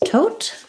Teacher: Make sure that your O is a diphthong, that you hold it long. The first T, tote, has a puff of air.